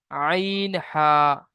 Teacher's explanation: 2 নম্বর মাখরাজ, হলকের বা কণ্ঠনালীর মাঝখান হতে উচ্চারিত হয়